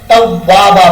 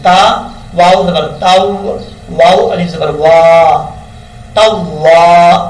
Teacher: واؤ کو پڑھتے وقت ہونٹ گول کریں گے